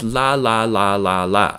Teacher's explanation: The frontal lem. Hardly ever the back of your throat lem.